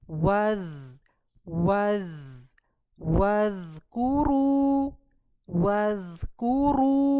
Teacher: यहां पे र हमारा हैवी होगा मोटा होगा